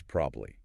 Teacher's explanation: We just drop that middle vowel sound entirely. 3 syllables become 2. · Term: syllable reduction